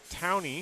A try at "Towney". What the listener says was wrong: I would just say Town. If he, I mean, that's how I'd say it. E is silent.